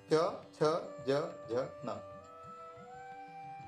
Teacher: इसके बाद च छ ज झ न, ये तालव्य है, मतलब इनका उच्चारण करते समय जीभ तालू से लगती है।